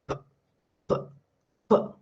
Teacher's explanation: So complete closure and sudden release. Complete closure, sudden release. So that's why this sound is known as stop. · You try to release the air, then it is blocked. It is blocked by your lips. Air is not released. Air will only release when you pronounce the sound p, p, then it is released.